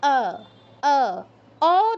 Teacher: কিন্তু সংস্কৃতে ঠোটটা গোল করা যাবে না ডানে আর বামে প্রসারিত হবে ঠোট দুটো